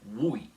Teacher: Isso é uma das únicas exceções no qual o U faz encontro com vogal na língua balorana. Ele é pleno e não semivogal e faz um iato ao invés de ser o ditongo.